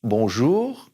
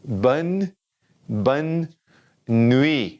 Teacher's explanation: that N, when it's by itself in the middle of the word or at the end of the word, it's going to be in our nose